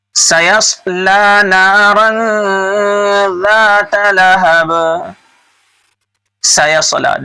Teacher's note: سین کو باریک پڑھیں گے اور صاد کو موٹا پڑھیں گے۔ سَيَصْلَى نَارًا ذَاتَ لَهَبٍ، لام کھڑا زبر لا ایک الف کے برابر کھینچ کر پڑھیں گے کیونکہ یہ کھڑا زبر ہے، کھڑا زبر الف مدہ کے برابر ہوتا ہے۔